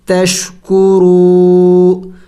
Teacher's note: تا شین زبر تش، کاف پیش کو، را واو پیش رو، واو مدہ ہے، ایک الف کے مقدار لمبا کرنا ہے، کھینچنا ہے